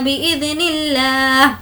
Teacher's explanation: लफ्ज़ अल्लाह को हमने यहाँ पर बारीक पढ़ा है